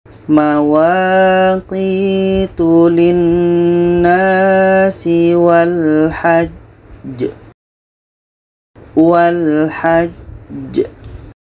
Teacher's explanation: ada jam mati diiringi dengan tasdid pada akhir bacaan ini Qalqalah Akbar cara bacanya kita berhenti dua detik setelah itu kita pantulkan